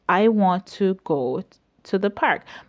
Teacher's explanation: here go and park are stressed because they are important words in the sentence